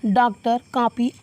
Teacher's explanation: अंग्रेजी भाषा के डॉक्टर, कॉपी आदि जैसे शब्दों में बोली जाने वाली अ, ये जो अ है, इसकी ध्वनि हिंदी के आ और औ के ध्वनियों के बीच की है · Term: आगत स्वर